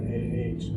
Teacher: The short A is more of an AH, not an A like cat. Right, it is ah, as in wall.